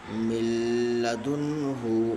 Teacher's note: نون ساکن کے بعد حروف یرملون کے 6 حرفوں میں سے لام ہے، اس لیے نون ساکن کو بلا گناہ ملا کر پڑھیں گے، اس کو ادغام تام بلا گناہ کہتے ہیں۔